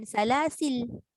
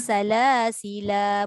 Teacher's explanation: Buang alif, sukun lam, matikan lam. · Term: hazaf alif dan sukun lam